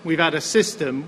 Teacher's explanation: he's dropping his h